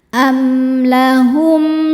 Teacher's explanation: Selanjutnya ada hukum izhar syafawi. Karena mim sukun tidak menghadapi mim ataupun ba, maka mim sukun dibaca dengan jelas juga.